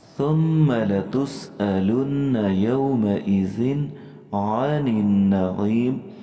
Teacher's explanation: ثم میں میم مشدد ہے اور یہاں پہ غنہ کریں گے